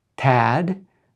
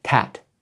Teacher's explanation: So when you are creating regulated verse in English, classical Chinese poetry, you have to pay a lot of attention to the last consonant of the word. If it's voiced, it's long, it's a yang sound. If it's unvoiced, it's short, it's a yin sound.